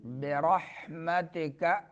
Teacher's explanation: را کو پر پڑھنا ہے، ہا کو درمیان حلق سے